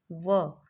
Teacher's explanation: हमारे दांतों को और होठों को मिलाकर यह वर्ण बोला जाता है और इसका कंबाइंड नेम हो जाएगा दंतोष्ठ।